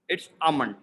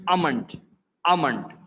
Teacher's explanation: So L is, I would say, silent and giving like a bit of slight H sound.